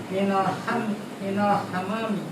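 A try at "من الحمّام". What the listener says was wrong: Ada tasydidnya. Minal hammami gitu.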